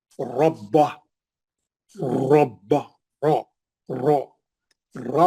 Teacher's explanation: जब भी रा पे जबर रहेंगे रा मोटा पढ़ेंगे, मुंह भर के पढ़ेंगे, पुर पढ़ेंगे।